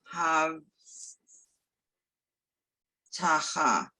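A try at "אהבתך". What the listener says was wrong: bat ha. Have bat ha. Ahavat ha. You're trying to read faster. You're really ready to, and you're sort of skipping the syllables.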